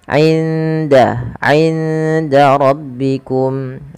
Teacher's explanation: Nah, suara 'indanya nun sukunnya disamarkan ke huruf dal.